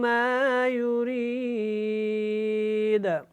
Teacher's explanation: یہاں پہ جب وقف کرنا ہے تو دال کو ساکن کریں گے تو اس کے اوپر قلقلہ ہوگا، کیونکہ یہ حروف قلقلہ میں سے ہے.